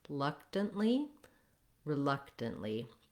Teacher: in the word reluctant, we have the stress is on the second syllable luck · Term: second syllable stress